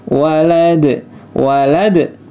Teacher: dalnya qalqalah ya, qalqalah kubro. Dalnya disukunkan ya, karena di waqaf.